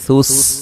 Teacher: ثا کو نرم ادا کریں گے، سین کو باریک سیٹی سے ادا کریں گے